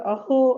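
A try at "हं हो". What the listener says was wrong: அஹோ இல்லம்மா, அது ஹம் ஹோ. அஹோ மாதிரி எடுத்துக்காம ஹோ. sadness மாதிரி கிடையாதுமா. ஓ ஹலோ அப்படின்னு சொல்ற மாதிரி தான்.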